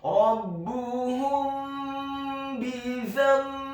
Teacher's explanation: Maksudnya ikhfa syafawi adalah menggunakan atau mensamarkan, mendengungkan huruf mim yang sukun sebelum membaca huruf ba. Dalam hal ini adalah huruf ba yang kasrah.